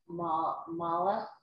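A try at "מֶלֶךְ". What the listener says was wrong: No, check the vowels. First one's melech.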